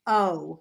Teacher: which is the diphthong of cup into oo